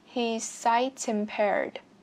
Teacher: Các bạn có thể nối âm chữ T sang chữ I ở đây nhé.